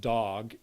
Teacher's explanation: In adult English, the vowel ah is a fairly back vowel in a pronunciation like dog in those dialects that don't happen to round the vowel and say dog.